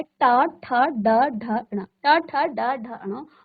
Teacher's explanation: आपकी जीभ हल्का सा मुड़ करके इसका उच्चारण करती है हर वर्ण को उच्चारित करने में। तो क्योंकि ये जो है कहाँ टच हो रही है, हमारी मूर्धा, यानी जहां आपकी जीभ स्पर्श हुई वो आपका मूर्धा स्थान है, इसलिए इस वर्ग को मूर्धन्य कहा जाता है।